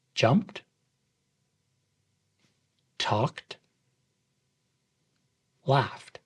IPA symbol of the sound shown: t